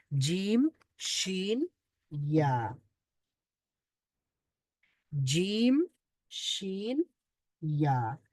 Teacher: জিহ্বার মধ্যখান, তার বরাবর উপরের তালুর সঙ্গে লাগিয়ে উচ্চারিত হয় জিম, শিন, ইয়া।